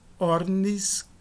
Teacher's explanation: com a queda da dental diante do sigma